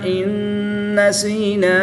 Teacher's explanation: نون ساکن کے بعد نون حروف ینوالون میں سے ہے تو یہاں پر ادغام مع الغنہ ہوگا، لیکن غنہ کے ساتھ ادغام کریں گے. · الف مدہ کے بعد حمزہ دوسرے کلمے میں ہے تو یہاں پر مد منفصل ہوگی. 2 سے 3 الف تک کھینچ کر پڑھیں گے